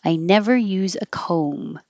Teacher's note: Comb, forget the B, and the vowel is O like home, so you have to round your lips.